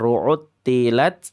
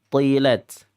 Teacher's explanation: yang pertama istifal, yang kedua isti'la. Yang pertama lidahnya turun ya. Yang kedua lidahnya naik.